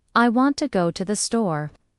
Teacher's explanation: Stress on want. Go store. Even though to the is two syllables, they are said quickly to keep the rhythm. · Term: stress timed, stress-timed